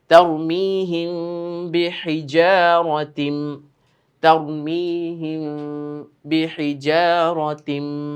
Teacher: এই যে এখানে আমরা গুণনা করব কেন? মিম সাকিনের পরে বা এসেছে, মিম সাকিনের ইকফা বলা হয়।